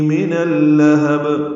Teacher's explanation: نون کو لام سے ملائیں دیں گے، لام پر زبر ہے ، ادغام شمسی ہو رہا ہے، یہ زبر لام کی جلدی